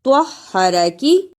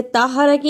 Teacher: پہ تا نہیں آنا چاہیے، ہستفاکی طہرکی، اسے طاہرکی نہیں پڑھنا، طوا کی جگہ پہ تا کی آواز نہیں آنی چاہیے